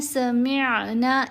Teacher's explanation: تو یہاں ہم نے پڑھنا ہے سمعنا، ایسے لہر کی طرح آواز ہوتی ہے، لہر کی طرح گلے سے ہو کر آواز واپس آئے گی میم پہ، کیونکہ آئین کی آواز گلے سے ادا ہوتی ہے